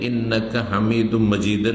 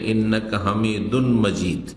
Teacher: একটি উচ্চারণ হচ্ছে ইদগামের সাথে, এটি হচ্ছে তাজউইদ বা কেরাতের কায়দা, আর একটি বিনা ইদগামে। প্রথম ইন্নাকা হামিদুন, আসলে হামিদুন তানবিন রয়েছে, কিন্তু তারপরে যেহেতু মিম আছে সুতরাং তানবিনের পরে ইয়ার মালুন, ইয়ারা, মিম, লাম, ওয়াও, নুন, এই 6টি অক্ষরে কোনো একটি অক্ষর হলে তখন তানবিন হয়।